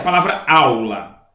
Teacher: É o A. Então, esse A é a vogal e esse U é a semivogal. Estão na mesma sílaba, então é ditongo.